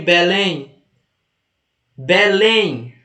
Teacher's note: Belém, qual é a mais forte? Lém é a última. Então tem que ter o acento no E, do EM.